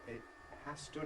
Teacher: she pronounced it as ‘[ɪʔ] has to’ with a glottal stop